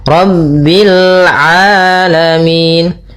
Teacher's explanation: Rabbil, ra-nya tebal, ra tafkhim, rabbil alamin.